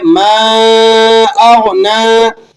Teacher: ما اغنا، اب میم الف زبر ما ہے، میم پر مد لگا ہوا ہے، 3 سے 4 الف تک آپ نے اس کو لمبا کر لینا ہے